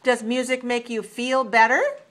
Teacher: we want to make rising intonation use rising intonation on the yes no question